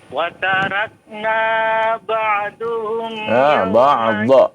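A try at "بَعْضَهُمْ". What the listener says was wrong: ba'dha. Bukan du ya, bukan dhamma, fathah.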